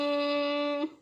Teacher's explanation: होंठों को ज्यादा देर अगर बंद रखें तो इसका मतलब क्या है कि ये मीम साकिन के बजाय मीम मुशद्दद बन गया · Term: गुन्ना